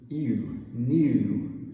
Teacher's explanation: it really starts with the tense E and goes to the oo.